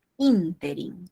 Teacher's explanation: Interim, o sea, se pronuncia como una esdrújula